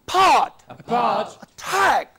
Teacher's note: That is, this syllable, this part of the word is to be made relatively more prominent. Now there are two syllable words. Yes, but stress is on the second part.